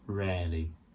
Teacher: So we don't say that rarely. We don't say the second R